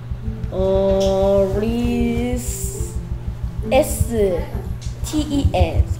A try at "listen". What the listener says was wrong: 오케이, 리스텐이 아니고 리슨. 스펠링 네. 조심해야 되고요.